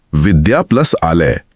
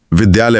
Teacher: यहां विद्या की आखिरी ध्वनि आ और आलय की पहली ध्वनि आ मिलकर विद्यालय